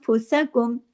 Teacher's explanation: नून साकिन के बाद फ आ रहा है इफा हो रहा है इफा हकीक गुना कामिला हो रहा है छोटा गुना हो रहा